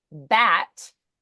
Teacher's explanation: Bat, we vibrate on B and A, but not the T.